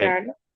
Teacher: Acuérdense la nasalización en san, central.